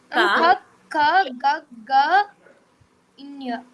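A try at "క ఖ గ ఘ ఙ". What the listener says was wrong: క ఖ మీరు కొంచెం ఒత్తు పలకండి, మహా ప్రాణాక్షరాలు కదా. క ఖ గ ఘ జ్ఞ జ్ఞ. గ ఘ ఘ అలా అనాలి.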